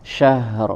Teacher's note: huruf ha sempurnakan dulu sifat hamsnya ya dan rakhaah